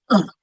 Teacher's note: that natural vowel that's often found in the weak unstressed syllables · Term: the schwa